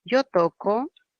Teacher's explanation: fonológicamente sigue siendo la oclusiva velar sorda. Así que el cambio a nivel de letra no importa.